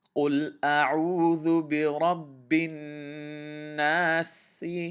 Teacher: You will see, I will say قل أعوذ برب الناس ملك الناس, but I will extend the last, when I'm ending the surah, I will extend the the mud, the natural mud, to 4 counts, and I will be treating the scene as if it has a sukoon on it.